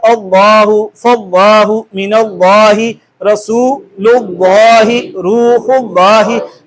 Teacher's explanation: قاعدہ ہمیں تجوید کا یہ کہتا ہے کہ اس میں اللہ کے لام سے قبل زبر اور پیش آ جائے تو اسے پر کر کے پڑھنا ہے، موٹا کر کے پڑھنا ہے